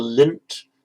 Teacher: the tongue automatically goes to the same place in the mouth where the t is going to come out